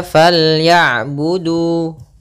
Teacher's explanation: Panjangnya untuk huruf du adalah 2 harokat. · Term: mad tabi'i